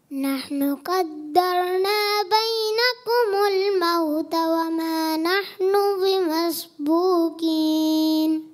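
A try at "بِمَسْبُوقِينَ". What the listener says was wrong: बिमस्बूकीन, क़ाफ मोटा रखना है।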